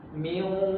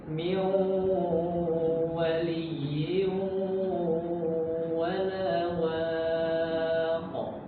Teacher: Ya, jadi nun sukun bertemu wawu di sini. Dia idgham, ya, tapi idghamnya itu nakis. Masih menyisakan sifat dengung di dalam hidung.